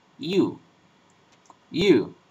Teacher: Then we have a palatal approximant, which is voiced. This is pronounced, this is a semi-vowel.